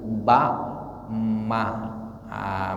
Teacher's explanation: huruf ba dengan mim itu kan hampir sama ya, sama-sama di bibir, ba ma. Makanya ke dalam beberapa qiraat itu terkadang ba diganti dengan ma, atau mim bisa diganti dengan ba.